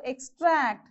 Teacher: so here you have two syllables and even this e as a weak prefix so the second syllable will take the stress mark